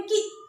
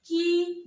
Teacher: छोटी की मात्रा का जो उच्चारण है वह जल्दी किया जाता है, झटके से, जैसे बोलेंगे की। और बड़ी का उच्चारण की देर तक किया जाता है।